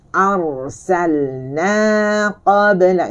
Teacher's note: Ra dia menyentuh di langit.